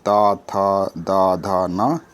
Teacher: ता वर्ग में आएंगे ता था दा धा ना, इसका उच्चारण स्थल है दंत